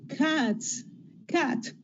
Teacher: when you put the s for many cats then you get S you don't change that because s has little or no vibration of the vocal cords · T has no vibration or very little vibration